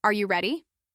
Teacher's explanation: For example, if I say, "Are you ready?" and my voice rises at the end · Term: rising intonation